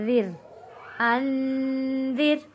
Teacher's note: انذر، یہاں پہ نون ساکن پہ غنہ ادا کریں گے کیونکہ اگلا لفظ حروف ہلکی نہیں ہے۔ انذر، یہاں پہ را کو باریک پڑھا جائے گا